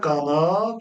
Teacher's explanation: tələffüzdə qanat sözü t şəklindədir. D, t-yə keçir.